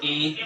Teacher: तालव्य यानी कि ये तालु से बोले जाते हैं। और और ये जीभ के अंग अग्रभाग से, आगे वाले भाग से बोले बोला जाते जाता है।